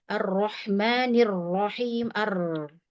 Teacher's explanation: Kemudian arro dikasih getar. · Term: ro getarnya